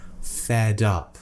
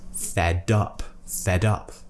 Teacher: I'm not leaving a gap between those two words they're almost becoming one word · we borrow the last consonant from the end of the first word and we bring it on over to the beginning of the next word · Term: linking